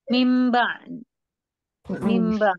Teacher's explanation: Jadi berubah ya untuk bunyi atau huruf nun tadi atau tanwin ini berubah bunyinya menjadi mim ya. Dan dibaca dengan gunnah, ditahan ya. Ditahan, digunnah atau didengungkan 2 harokat ya. · Jadi cara bacanya, bunyi nun atau tanwin tadi ini diubah menjadi suara atau bunyi mim ya. Jadi berubah ya untuk bunyi atau huruf nun tadi atau tanwin ini berubah bunyinya menjadi mim ya. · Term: iqlab